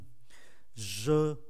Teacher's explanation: j này phải uốn lưỡi. Mà muốn phát âm được j này, chúng ta phải siết hai hàm răng lại.